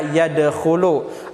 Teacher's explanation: qalqalah sugro bunyinya tidak terlalu ya keras, pantulannya tidak terlalu keras